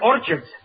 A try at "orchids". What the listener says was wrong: It's not orchids, it's orchids. The CH is pronounced like K.